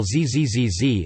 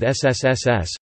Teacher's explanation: one can feel a vibration while zzzz is pronounced but not with ssss